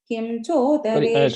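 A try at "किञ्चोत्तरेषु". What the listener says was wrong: அந்த இடத்துல இன் அந்த இம் கிடையாது, அந்த ஞாவோட half தான் அது. So in kinchothareshu first line. Kim கிடையாது, in sound அது. அந்த ஞா, அந்த சான்ஸ்கிரிட் ஞாவோட half இருக்கும் அதுல.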